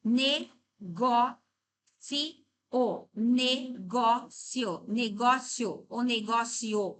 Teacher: A número dois, a sílaba dois é a mais forte. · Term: paroxítona